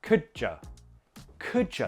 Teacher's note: could you also has that dy transition, j. Now, make sure you don't overpronounce these by pushing it out like, could ya do something, right?